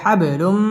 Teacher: তানবিনের বামে মিম আসছে মিম ইদগামে বা গুন্নার হরফ গুন্না সহ মিলিয়ে পড়তে হবে